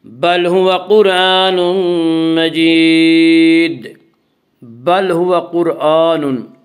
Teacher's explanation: قرآن کی را کو پر پڑھا جائے گا۔ اس کا قاعدہ یہ ہے کہ را ساکن سے پہلے زبر اور پیش آئے تو را ساکن کو پر پڑھا جائے گا، را ساکن سے پہلے زیر آئے تو را ساکن کو باریک پڑھا جائے گا، یا را ساکن سے پہلے پیش ہے اسی را ساکن کو پر پڑھیں گے۔